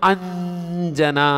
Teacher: ಅಂದ್ರೆ ಈ ಅನುಸ್ವರವು ಸ್ವರವನ್ನು ಅನುಸರಿಸುತ್ತಾ ಇಲ್ಲ ಅ ಪಕ್ಕದಾಗಿದೆ ಅಂ ಆಗಬೇಕು ಅಲ್ಲ ಎದುರಿಗೆ ಜೆ ಇದೆ ಜ ದ ಅನುನಾಸಿಕ ಅಕ್ಷರ